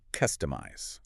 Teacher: The stress is really on the custom part.